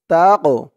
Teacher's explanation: এই কফটা হচ্ছে কলকলার হরফ একটু ধাক্কা দিয়ে বলতে হবে কলকলা মানে ধাক্কা দিয়ে পড়া তা কফ জবর তাকো তাকো ওয়া